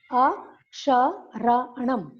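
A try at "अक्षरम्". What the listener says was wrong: Nam, kutra. Aksharam.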